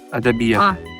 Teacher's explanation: Там твердый будет я, хотя там предыдущие гласные все будут мягкие.